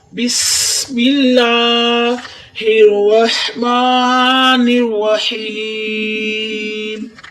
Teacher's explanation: मिल्ला पे ये अलिफ वाला लाम होता है, इसको कहते हैं अलिफ वाला लाम। अलिफ वाले लाम से पहले जेर है तो इसको बारीक पढ़ना है।